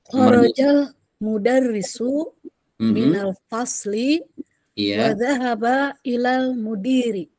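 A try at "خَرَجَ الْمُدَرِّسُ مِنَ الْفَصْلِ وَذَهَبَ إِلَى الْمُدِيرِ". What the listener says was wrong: Betul,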